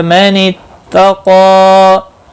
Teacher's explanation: نہیں، بر را زبر کی وجہ سے پر پڑا جائے گا، من اتقا قاف مستعلیہ ہے، پر پڑا جائے گا